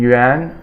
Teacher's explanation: Yan is the second tone or Rising tone